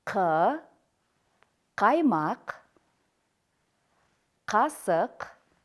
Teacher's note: к согласный глухой твёрдый заднеязычный взрывной при произношение звука к задняя часть языка смыкается задней частью нёба · при произношение звука к задняя часть языка смыкается задней частью нёба после чего воздух мгновенно вырывается